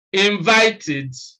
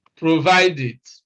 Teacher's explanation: when the e d past tense morpheme comes after the sound of t or d then it is pronounced eid